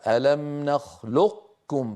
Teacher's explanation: فيطبقون على قاف ويجافون المخرج عن كاف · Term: صفة الاستعلاء